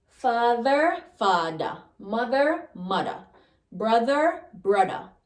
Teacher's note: the voiced th becomes d